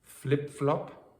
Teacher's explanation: It just means that your tongue is higher in the mouth when you say the vowel in the first word and lower in the mouth for the second.